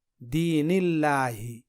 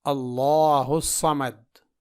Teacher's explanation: یہاں دیکھیے، یہ سورہ اخلاص ہے اور یہاں پہ لفظ اللہ ہے اور لفظ اللہ سے پہلے زبر یعنی فتحہ ہے، تو یہاں پر لفظ اللہ کے لام کو موٹا پڑھا جائے گا